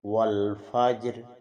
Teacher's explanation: روم کے ساتھ وقف کرنا میں پہلے بھی بتا چکا ہوں کہ اس میں 1/3 جو حرکت ہے اس کی آواز محسوس ہوتی ہے